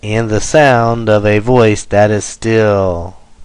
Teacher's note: three syllables unstressed unstressed stressed so three anapests equals nine syllables